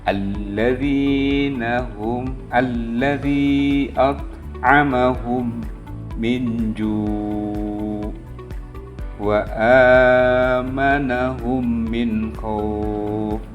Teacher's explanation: ada mim sukun bertemu dengan huruf mim nah cara membacanya adalah memasukkan huruf mim ke dalam huruf Mim disertai dengan suara gunah sekitar dua ketukan atau harakat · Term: idgham mutamatsilain